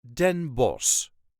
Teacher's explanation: In this case we don't pronounce the CH, which would technically be a harsh G